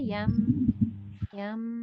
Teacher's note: یا کو جب آپ میم سے کنیکٹ کریں گے تو فرسٹ کنیکشن یم پہ غنہ ہوگا